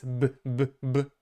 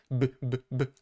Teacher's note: It is, we're using our voice, b, b, b. It is, we can hear and feel the vibration in our throat, b, b, b. Okay, so this is voiced.